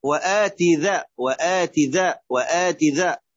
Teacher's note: هي كسرة تاء مثنى فوقانية مكسورة، فلا تشبعها لتصل إلى الياء